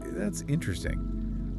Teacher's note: But an enthusiastic, curious, that's interesting with the emphasis on that first syllable. That sounds like genuine curiosity.